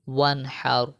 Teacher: نون ساکن ہے اور نون ساکن کے بعد جو ہے وہ حا آ گیا ہے، تو یہاں پر بھی ہم غنہ نہیں کریں گے